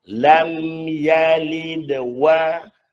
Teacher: kita sambung dia. Maka lantunan pada dal di situ menjadi lantunan yang kecil disebabkan kita nak menyebut suku kata yang seterusnya.